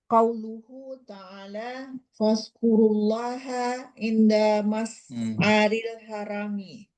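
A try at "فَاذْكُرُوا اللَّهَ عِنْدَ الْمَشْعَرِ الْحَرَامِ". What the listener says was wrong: Iya, hanya itu ha besar.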